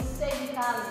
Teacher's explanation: o som ocorre quando a língua toca o véu do palato, também conhecido como a parte de trás do céu da boca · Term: velares